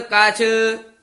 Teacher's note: ਹੈ ਅਚਰੀਅਤ ਅਨ ਪਦ ਭੋਲਾ ਹੀ ਬੋਲਣਾ ਅੰਨ ਨਹੀਂ ਕਹਿ ਦੇਣਾ ਕਛ ਵੀ ਭੋਲਾ ਹੀ ਬੋਲਣਾ ਕੱਛ ਨਹੀਂ ਕਹਿ ਦੇਣਾ